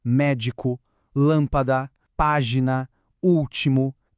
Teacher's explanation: Em todas elas a gente bate o olho e vê que a sílaba forte é a terceira de trás para frente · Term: proparoxítona